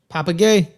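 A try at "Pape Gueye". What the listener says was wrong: Pop Gay. They don't say the E. Pop Gay.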